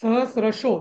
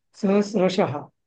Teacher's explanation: पण तो विसर्गाचा ओ झाला पुढे भ असल्यामुळे